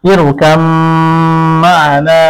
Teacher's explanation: অনুরূপ ভাবে ইরকাব মা'ানা এখানে বা মিম, বা সাকিন মিম, তো বা এর পরে মিম এলে মিমের মধ্যে বাকে মিলিয়ে দিতে হবে, সেই হিসেবে ইরকাম মা'ানা এভাবে বলতে হবে। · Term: ইদগাম